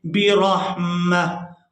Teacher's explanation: अगर हम यहाँ पर वक़फ़ करते हैं तो ये लफ्ज़ पढ़ा जाएगा बिरहमह। यानी ये जो एक आंख वाली ता है ये हा के अंदर बदल जाएगी और मीम को हम हा साकिन के साथ मिलाकर अदा करेंगे बिरहमह।